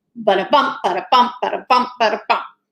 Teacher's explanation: that anapest is comprised of an unstressed syllable, an unstressed syllable, and a stressed syllable.